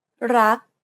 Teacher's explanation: Do you notice how air in the final K sound is not expelled? This is true for all final consonants in Thai words.